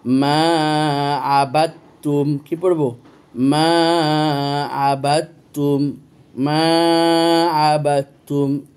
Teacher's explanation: দাল করে আবার 2টো তা কোনোদিন উচ্চারণ হয় না, একটা তা উচ্চারণ হয় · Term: মুতাকারিবাইন